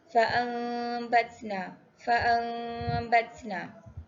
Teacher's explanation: hukum tajwid iqlab. Cara bacaan dengung. Tukar huruf nun kepada mim.